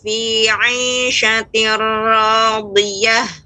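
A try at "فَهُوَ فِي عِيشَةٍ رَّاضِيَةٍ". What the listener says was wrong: Tebalkan pada ra ya, Ummu. Tir. Fahuwa fi 'ishatir radiyah.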